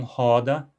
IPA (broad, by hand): hɔda